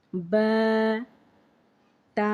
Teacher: با کو ایک الف کی مقدار کھینچ کے پڑھیں گے۔